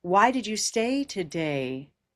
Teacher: And I also hear the tone of a question. These why questions will have an ending that goes down.